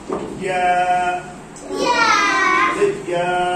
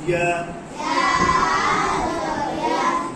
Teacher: জিহ্বার মাঝখান থেকে উপরের তালুর সাথে লাগিয়ে। জিহ্বার মাঝখান উপরের তালুর সাথে লাগিয়ে উচ্চারণ করতে হবে। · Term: ইয়া অক্ষর